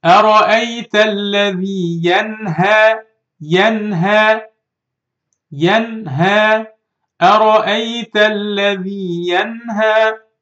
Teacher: So I should read this noon clearly. I should do إظهار. · I don't do غنّة when I read the letter نون. I say it without غنّة, without nasal sound.